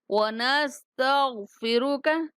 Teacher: غین اور را کو پر پڑھیں گے